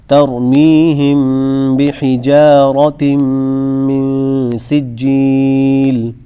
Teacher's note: جیم کے اندر موٹے کی آواز بالکل نہیں آئے گی